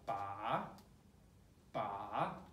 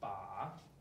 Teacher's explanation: So make sure the tone is going down and going up. Third tone, 把.